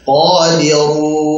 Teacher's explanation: Ru tebalkan, jangan qadiru, jangan ru tipis tapi ru tebalkan